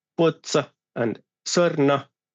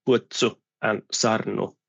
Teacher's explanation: in the second syllable, there's O in many words in the place of U